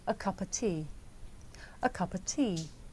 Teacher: words a and of become schwa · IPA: /ə 'kʌpə tiː/